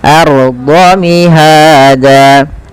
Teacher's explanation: tebalkan ra sukunnya karena ia ra tafkhim, yang dimana ra sukun didahului dengan fathah.